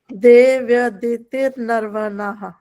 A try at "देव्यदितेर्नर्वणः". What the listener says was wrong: नहीं, फिर तिर हो गया ना, तिर, र बोलना दे, फिर सुन लो।